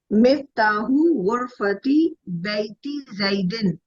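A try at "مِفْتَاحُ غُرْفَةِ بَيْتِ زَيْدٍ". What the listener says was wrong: Very good, माशाल्लाह माशाल्लाह।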